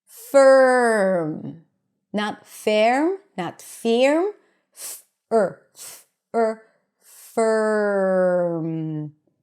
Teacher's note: We don't add a vowel in between. The R takes over the vowel sound, okay? And you basically want to connect the consonant before to the R.